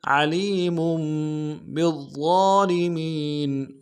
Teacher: ضا کو موٹا کریں گے، ضا کے اوپر تشدید زور دیں گے ، اور ضا کے اوپر کھڑا زبر بھی ہے، ایک الف · میم کی تنوین کو آگے میم کے ساتھ ملانا ہے، تنوین میں غنہ کریں گے